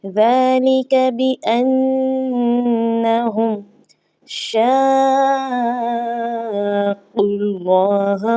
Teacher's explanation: اب قاف کے اوپر پیش آنے کی وجہ سے اللہ کا نام موٹا پڑھا جائے گا · شین کو قاف کے ساتھ ملانا ہے، کیونکہ قاف پر تشدید آ چکی ہے